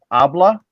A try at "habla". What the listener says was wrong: No, it's not habla. The H is silent. It's habla.